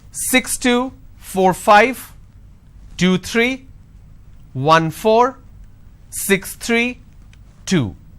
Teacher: the moment I drop my tone that means it's the end of the series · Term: intonation